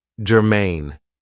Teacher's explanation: this is 2 syllables, and the stress is on the second syllable, germane.